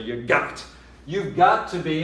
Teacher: there's nobody on earth who wouldn't stress the got